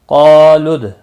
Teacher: قالوا ادع لنا ربك يبين لنا ما لونها۔ قالوا، قاف اور الف دونوں پر پڑھے جائیں گے۔ مستعلیہ کے بعد جب ایک ہی کلمے میں الف آتا ہے ساتھ میں تو وہ پر پڑھا جاتا ہے۔